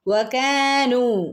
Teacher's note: വകാനു കാഫിൻ്റെ കൂടെ അലിഫ് മദ് വന്നിട്ടുണ്ട്, രണ്ടനക്കം നീട്ടി കൊടുക്കണം കേട്ടോ